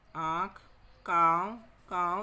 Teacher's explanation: अगर मुंह के साथ साथ नाक से भी बाहर निकले वायु या ध्वनि, वो अनुनासिक हो जाता है।